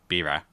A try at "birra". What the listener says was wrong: Yeah, birra. Can you roll your R's? It's double R. it's birra. But yeah, birra, whatever. If you can't say it right, that's fine.